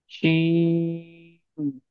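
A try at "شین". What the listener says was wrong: नहीं, आप खींच रहे हैं बराबर यार, फिर आपकी आवाज कम आ रही। शीन।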